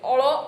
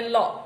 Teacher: લ એ દંત્ય પાર્શ્વિક છે, અળ એ મૂર્ધન્ય પાર્શ્વિક છે. અને અળ બોલતી વખતે જરાક થડકારો થાય છે, એટલે એને થડકારવાળો ધ્વનિ પણ કહેવાય છે.